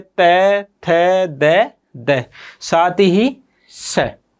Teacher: इनका उच्चारण किसके माध्यम से किया जाता है? दंत के माध्यम से किया जाता है।